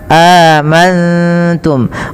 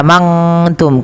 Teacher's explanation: Cara membacanya, nunnya samarkan kepada huruf ta. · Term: ikhfa hakiki